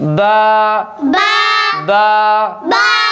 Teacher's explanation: آخر میں حمزہ اور ہا کی آواز نہ آئے